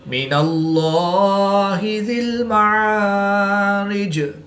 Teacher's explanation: याद रहे कि इसमें दलालत अल्लाह अज़्ज़ा वजल के लाम के अलावा हर लाम हर हालत में बारीक ही पढ़ा जाएगा। वक़फ़ की हालत में जीम की ज़ेर को साकिन करेंगे तो यहाँ पर वक़फ़ की हालत में क़लक़लाए सुग़रा करके पढ़ेंगे